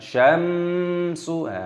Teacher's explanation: Wa jumi'asy syamsu, mim sukun bertemu dengan huruf sin, hukumnya dibaca idhar syafawi, dibaca jelas, tidak boleh didengungkan.